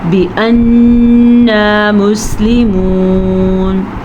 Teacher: نون کا غنہ ادا کریں گے نون پہ شد کی وجہ سے